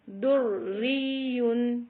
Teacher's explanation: پہلی را موٹی پڑھی جائے گی پھر دوبارہ جب را کا ساؤنڈ آئے گا پھر وہ باریک پڑھا جائے گا